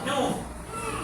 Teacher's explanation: kalau ustaz letak baris hadapan bunyi muncuk mulut nu